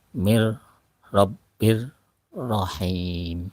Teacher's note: Nun bertemu dengan ro Maka langsung ke huruf ro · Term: idgham bila guna